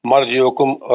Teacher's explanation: مرجعکم را موٹا پڑھا جائے گا کیونکہ اس پہ سکون ہے, اس سے پہلے زبر والا حرف ہے